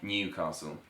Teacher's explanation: the Southern way Newcastle. So they'd say new the dipthong of going between two vowels